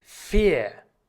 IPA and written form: fiːɐ̯ (vier)